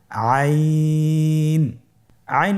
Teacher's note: হরফটি কন্ঠনালীর মধ্যখান থেকে উচ্চারিত হয়।